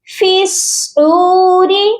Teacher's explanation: فا کو ڈائریکٹ صاد کے ساتھ ملا کر پڑھیں گے